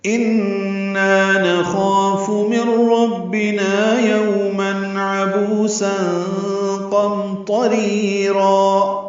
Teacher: ان میں نون مشدد پہ غنہ اور نا الف مدہ